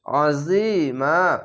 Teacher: আইনটিকে মোটা করে গলা চেপে বলবেন